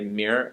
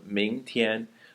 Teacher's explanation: If you're from Beijing, you might say 明 儿 instead of 明 天, the word tomorrow. So we've replaced that 天 with an Erhua totally. 明 儿.